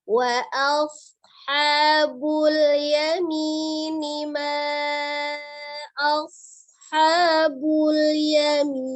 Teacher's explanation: shad itu ujung lidahnya berada di antara ujung gigi seri atas dan bawah ya, tengah-tengah. Tapi dia karena dia tebal sama dengan sin tapi dia tebal itu dengan mengangkat pangkal lidahnya.